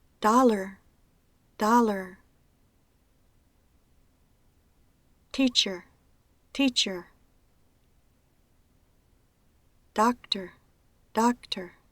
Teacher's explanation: la vocal que representa se pronuncia con una duración muy corta, de una manera tan relajada que es indistinguible como cualquier vocal en particular. Las sílabas que contienen la schwa son siempre átonas. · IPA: ər